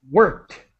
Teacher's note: And worked, a T sound, no extra syllable.